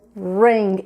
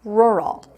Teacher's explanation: esse R que a gente puxa, é bem caipirão mesmo, é o que a gente vai usar aqui no rural.